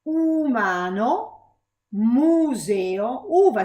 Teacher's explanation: See, I'm rounding my lips when I say u. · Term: back vowel